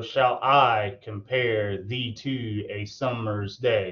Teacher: unstressed stress unstressed stress unstress stress unstressed stress unstressed stress and we have five of those so that's where you get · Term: iambic petameter